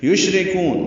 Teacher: شین ساکن پہ ہمس ہے، تفشی ہے، شین میں آواز منہ میں پھیلتی ہے، سانس جاری رہتی ہے، را باریک کر پڑھیں گے، کاف کو لمبا کریں گے.